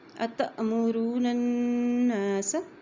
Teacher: أتأمرون الناس ادھر حمزہ کے اوپر جزم ہے جہاں بھی حمزہ کے اوپر جزم آتی ہے تو وہاں پہ ہم جھٹکا دے کے پڑھتے ہیں